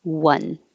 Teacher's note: One sounds like it starts with a W because you have to start with rounded lips.